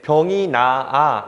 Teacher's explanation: 병이 나아 이런 식으로 발음을 하지 시옷을 살려주지 않잖아요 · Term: 시옷 탈락